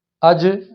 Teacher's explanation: اور ایک ہے اخ، اح، اخ، اح، اج۔ دیکھیں زبان تالو سے لگی اور فوری ہٹ گئی